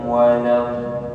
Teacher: setelahnya ada huruf bertasydid maka mad lazim dibaca 6 harakat